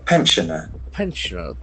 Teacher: The accent for the first syllable, pensioner.